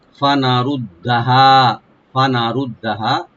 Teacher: রটাকে deep করে পড়বো, দালটাকে double করে মুসাদ্দাদ করে আমরা পড়বো, আর হাটাকে এক আলিফ টানবো রাইট দিয়ে।